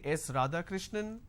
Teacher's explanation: Now it goes on a rising tone. Now it doesn't come as an answer, it comes as a guess or it comes as a question.